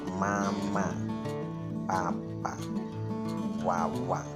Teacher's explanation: konsonan bibir atau Begu konsonan karena yang berfungsi menyebut konsonan itu adalah bibir